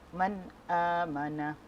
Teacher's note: nun mati berjumpa dengan hamzah juga adalah izhar halqi, sebutannya dijelaskan tanpa adanya dengung